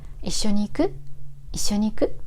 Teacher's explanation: You have to say く higher than usual to show it's a question.